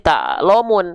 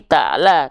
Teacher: kalau keluarnya vokal a bukan vokal o maka dia termasuk ke dalam huruf yang tipis kalau keluarnya vokal O dia huruf yang tebal lam enggak dibaca